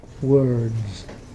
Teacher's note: he's obviously pronouncing his R in words, so he hasn't got R dropping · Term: roticity